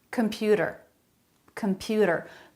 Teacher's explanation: a flap instead of a t sound